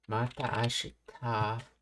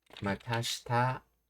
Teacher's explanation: Pronunciation Matashita is a common colloquial contraction of Mata Ashita. Oh, I see. Yeah, because you just hang the A little longer, and that would be just Matashita.